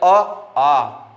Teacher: जब उच्चारण करेंगे अ आ, तो दोनों का उच्चारण कहां से होगा? कंठ से होगा।